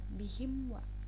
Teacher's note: Nah, junubihim wa itu idhar syafawi karena dia mim sukun bertemu wawu. Jadi dibacanya tidak boleh ditahan. Jadi jelas dan cepat